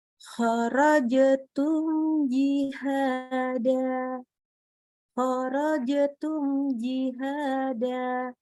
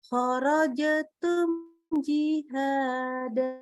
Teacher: Oke, kita lanjut kepada mim sukun ketemu dengan huruf yang syajariah ini, maka dibaca jelas mimnya, ya, idhar syafawi, karena huruf mimnya dari huruf bibir ya. Jadi mimnya dibaca jelas, tidak kita kasih tambahan gunnah.